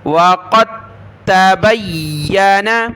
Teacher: قاف کو تا کے ساتھ ملائیں گے